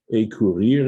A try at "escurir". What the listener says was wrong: And by the way, you do pronounce the S, it's escurir. did, if they replace the S with an accent aigu, then it's a career. And that's usually showing that the S is gone.